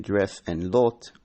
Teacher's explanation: Short E and O as in dress and lot, lowered a bit.